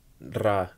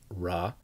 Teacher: make sure that you get the trilled r bra at the beginning instead of raw